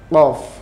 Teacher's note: Awalnya tenggorokannya seperti ditutup, kemudian dibuka.